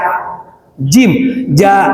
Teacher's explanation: Kalau jim ja di lidah tengah-tengah nempel ke langit-langit atas ya.